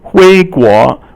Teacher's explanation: 回 is second tone, 国 is second tone